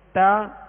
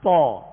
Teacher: باقی ان کا مخرج اور ان کی آواز ایک جیسی ہے، لیکن فرق کیا ہے؟ تا باریک اور طا موٹا پڑھا جائے گا.